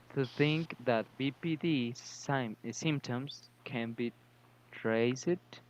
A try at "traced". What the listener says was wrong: So that one would just be the traced. So just the D. It's tricky because some words are the ED sound, but this one's just traced.